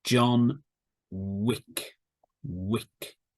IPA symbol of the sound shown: w